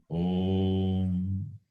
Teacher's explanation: Om is only 3 matras. More than 2 matra, we can take 3 matras.